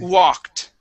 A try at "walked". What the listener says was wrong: Instead of gwa, start with an oo. Ooh.